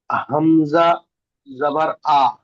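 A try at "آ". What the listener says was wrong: এটা হবে হামজা আলিফ জাবার আ, একালিফ টান হবে, আলিফ মাদ্দা এটা।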